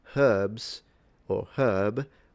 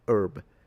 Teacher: the H is fully pronounced in herbs or herb, but it's gone in the American herb. So, the H is dropped in that situation.